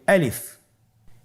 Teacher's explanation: আলিফ হরফটি মাখরাজ হলো আপনার মুখের শূন্যস্থান থেকে। গলা এবং মুখের শূন্যস্থান হতে আলিফ হরফটি উচ্চারিত হয়